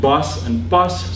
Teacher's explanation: the contrast between a word like bus and pas, so a voiced and voiceless one, is maintained not in the plosive, but in the vowel